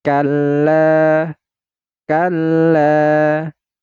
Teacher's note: Mad tabi'i. Panjangnya itu 2 harokat. Tidak boleh lebih dan tidak boleh kurang.